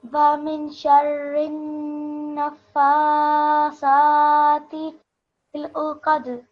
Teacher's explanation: with the noon mushaddad, with the noon sound, the nasal sound for 2 seconds